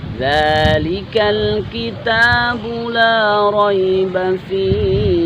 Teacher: Hak di terakhir meskipun dia sukun tapi sifat haknya tidak boleh hilang, tetap berhembus.